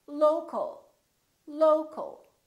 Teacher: we reduce the second syllable and it becomes the uh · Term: reduced